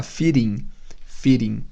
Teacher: esse D, quando está entre vogais, pode receber o som do flap T, que é aquele som de R de seringa